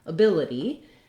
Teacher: our first word ability has second syllable stress that means the bill syllable is long · the first syllable spelled with letter a doesn't have any sort of a sound it actually has vowel schwa it sounds like a so when a word has second syllable